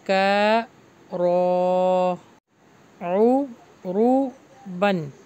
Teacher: رہا ہے، اب کھا الف مدہ لانگ ہوگا، کا رو رو بن یہاں پہ اظہار ہو رہا ہے، غنہ نہیں ہوگا